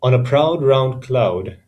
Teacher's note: proud and round do not rhyme but the vowel sound au is used repeatedly for the phonetic effect